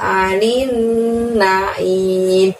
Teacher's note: Di naim nunnya bertasydid, maka anin nin ditahan dulu baru lanjut ke membunyikan naim. Aim dari tenggorokan kita ditutup dengan huruf M, maka langsung mulutnya juga kita tutup.